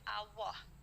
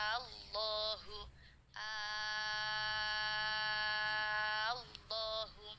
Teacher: Bibirnya moncong, huruf tafkhim, kemudian posisi lidah, makharijul huruf lamnya tetap di posisi huruf lam. Jadi bersuaranya kalau diurai seperti bersuara lo.